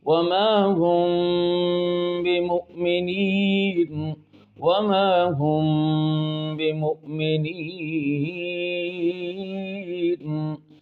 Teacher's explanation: اب وما ہم میں جو غنہ ہم نے کیا، اس غنے کا نام ہے اخفاء شفوی، کہ میم ساکن کے بعد با آ رہا ہے